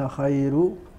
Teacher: وأما خير، هذه التي في الآية الأخيرة، وأنت خير، فالراء هنا يرققها، إنما يرققها ورش بوقوعها بعد ياء ساكنة. خير، رقق ورش فتح كل راء وضمها بعد سكون الياء. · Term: ترقيق الراء